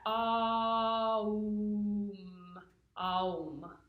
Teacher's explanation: really what I've read and what I've been taught is that Om is really a sound A-U-M, Aum. So it's like a diphthong sort of thing.